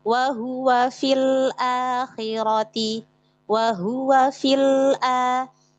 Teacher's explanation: Huruf sukun yang pertama yaitu ya mad dibuang dihilangkan gitu.